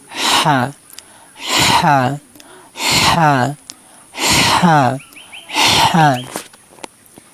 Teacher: হলকের মধ্যখান মানে গলার মধ্যখান থেকে উচ্চারণ হবে। হা হা হা হা হা। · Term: হা হরফ